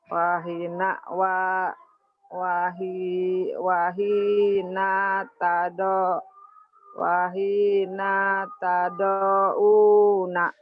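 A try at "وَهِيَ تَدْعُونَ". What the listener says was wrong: Naknya pendek. Wahina tad'una. Wahina tad'una. Waya, titiknya di bawah. Yang di bawah jadi di bawah, dia di atas. Ketuker-tuker.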